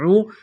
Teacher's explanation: اعوذ حمزہ زبر عین واو پیش عو، واو ساکن سے پہلے پیش ہے، حروف مدہ واو ہے، الف کے برابر کھینچنا ہے